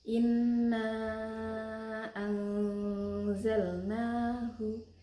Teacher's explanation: Dalam bacaan itu ada nun sukun bertemu dengan huruf za maka dibaca samar-samar dengan dengung. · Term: ikhfa